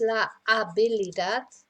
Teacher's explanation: in Spanish, of course, we don't pronounce the H, so it's la habilidad.